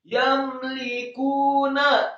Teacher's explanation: Kata la yamlikunya, lam alifnya fathah dua harokat, kemudian yamlikuna, ya-nya fathah satu harokat, mimnya dibaca sukun, kemudian lamnya dibaca tipis satu harokat kasrah, kemudian kafnya dibaca tipis marfu atau dhammah dua harokat karena setelahnya ada wawu sukun. Yamlikuna, setelah huruf kaf yang marfu atau dhammah dua harokat ada huruf nun yang fathah satu harokat.